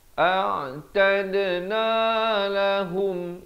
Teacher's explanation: Ha bari dhammah bunyi hu, bukan bunyi ho bila bertemu mim ya